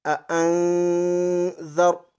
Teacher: ہم نے نون کی آواز ناک میں چھپائی اس وجہ سے کہ نون ساکن کے بعد حروف اخفا کے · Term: اخفائی حقیقی